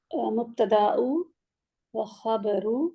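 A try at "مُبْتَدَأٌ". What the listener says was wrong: वाय मुब्तदाउन, मतलब मुब्तदाउन क्यों नहीं है? मुब्तदाउ क्यों बोला आपने? आगे वाव आ रहा है ना।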